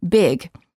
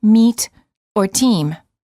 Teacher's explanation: relax your tongue and lips for the I and to make them tense for the E